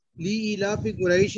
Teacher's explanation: फा पे खड़ा जबर है, नहीं फा पे नहीं है, लाम पे जी है खड़ा सॉरी लाम पे खड़ा जबर है और इसको दो हरकत देंगे।